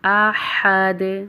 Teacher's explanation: ہا کی ادائیگی وسط حلق سے ہوگی ، احد، دال کے اوپر قلقلہ ہوگا، احد۔ ترجمہ: لم یلد،